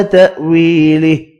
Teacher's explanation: یہ حمزہ ہے، اس کو الف نہیں پڑھنا، الف پڑھیں گے تو یہ الف مدہ پڑھا جائے گا جو کہ غلط ہے. وی یا مدہ ہے، ایک الف کی مقدار میں کھینچ کر پڑھیں گے.